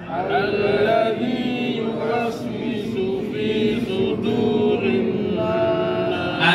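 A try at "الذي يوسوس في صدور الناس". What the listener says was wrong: Sudur shad, bukan sin. Bukan fi sudu, tapi dunya tipis. Fi sudurin, fi sudur. Sunya huruf shad bukan sin. Hati-hati. Fi su bukan fi su. fi sudurin nas. Kemudian huruf dal, ini Pak penting. Huruf dal ini kita dalnya Arab, bukan D-nya Indonesia.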